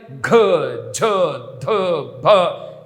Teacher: 2ನೇ ಕಂಬಸಾಲು ಮತ್ತು 4ನೇ ಕಂಬಸಾಲನ್ನು ಖ, ಘ, ಧ ಅಲ್ವಾ, ಇದು ಮತ್ತು ಫ, ಥ, ಇವೆಲ್ಲ 2ನೇ ಕಂಬಸಾಲು ಮತ್ತು 4ನೇ ಕಂಬಸಾಲಿನಲ್ಲಿ ಘ, ಝ, ಧ, ಭ, ಇದು 4ನೇ ಕಂಬಸಾಲಿನಲ್ಲಿ ಬರುವಂಥ 5 + 5 10 ಅಕ್ಷರಗಳನ್ನು, ಇದು ಮಹಾಪ್ರಾಣಾಕ್ಷರಗಳು. ಇದು ನಾಭಿಯಿಂದ ಬರುವಂಥ ಅಕ್ಷರಗಳಾಗ್ತವೆ, ಉಸಿರಾಗಿರುತ್ತೆ